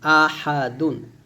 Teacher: হাটা গলার মাঝখানে থেকে চাপ বলতে হবে